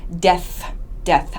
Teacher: don't pronounce this as desu with an s sound